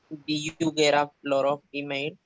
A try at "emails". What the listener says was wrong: No es emails, emails. Remember the linking words, consonants and vowels. Get a lot of emails or females.